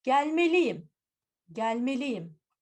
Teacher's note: Why there is a y semivowel? Because we've got 2 vowels now. In between, we need a semivowel.